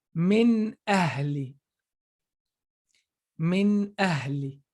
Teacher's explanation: whenever the letter after noon is coming from the throat, we say you just pronounce the noon clearly · the tongue is in the front of your mouth and the sound comes from your nose. So the exits are so separate.